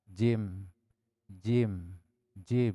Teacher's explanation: Jim ieu kaluarna tina tengah-tengah lidah.